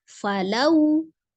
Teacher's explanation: Falau, waw sukun berfonem u ya. Kemudian sebelumnya fathah, madlin, ketika wasol atau disambung maka dibaca pendek, tidak panjang. Falau, la, kembali maqabi alif, 2 harakat.